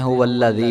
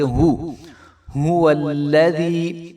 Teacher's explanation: تو یاد رہے کہ ہا کے اوپر جو ہے وہ پیش ہے، تو اس کو جو ہے ہم لمبا بھی نہیں کریں گے